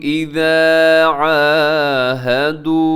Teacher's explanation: یہاں اذا کو لمبا کریں کیونکہ اس کے ساتھ الف ہے، الف مدہ ہے، اور عاہدوا یہاں آخر میں واو مدہ ہے، اسے بھی اپنے لمبا کرنا ہے.